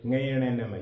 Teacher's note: तो ये पंचम वर्ण है, ये नासिक है, क्योंकि इनका उच्चारण करते हैं तो श्वास वायु किससे निकलती है, नाक से निकलती है। नाक से निकलते हुए ही हम इनका उच्चारण कर सकते हैं, इसलिए ये नासिक के वर्ण कहलाते हैं।